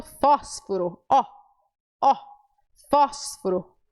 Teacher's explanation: O aberto é aquele que nós usamos na palavra, por exemplo, fósforo.